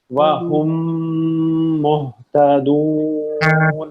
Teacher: ادغام ہو جائے گا. مرج کر دیں گے میم کی آواز کو، میم میں غنہ کریں گے بھرپور